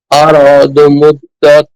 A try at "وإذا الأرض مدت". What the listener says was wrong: দত না মুদ্দাত পাতলা হবে।